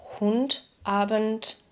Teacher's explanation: at the end of a word in German, the D is less voiced, resulting in kind of like a T